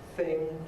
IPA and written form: θɪŋ (thing)